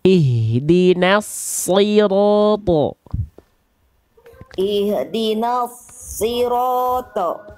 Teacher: kuatkan di shotnya lagi, ditekan karena dia bertasydid dan angkat pangkal lidahnya, dorong lidahnya ke dalam. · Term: huruf shad